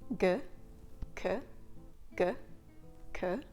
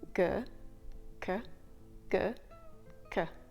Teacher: the C is actually a little bit further back than the g g c g c when you make the sound C in